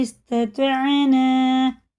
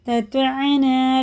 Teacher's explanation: پہلے تا ہے پھر تو ہیں، دونوں کا ایک مخرج ہے، لیکن تا باریک ہے تو ہی پورا ہے، تتانا نہیں کر دیں گے.